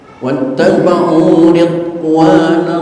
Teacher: Jangan sampai timbul qalqalah sehingga terdengar bacaan ridho wa, jangan. Karena dot bukan huruf qalqalah.